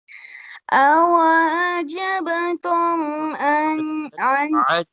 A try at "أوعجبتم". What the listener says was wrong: عجب عين should be clear, and you have to pronounce عجبتم. You have to pronounce qalqala here.